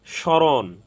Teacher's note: তো এখানে স্মরণ, এখানে তালব্য স প্রথম বর্ণ, প্রথম ব্যঞ্জন বর্ণ শব্দের, এখানে মফলা যুক্ত হওয়ার কারণে এখানে ময়ের কোনো মফলার কোনো উচ্চারণ হয়নি। স্মরণ, এখানে তালব্য স সামান্য নাসিক্য হয়েছে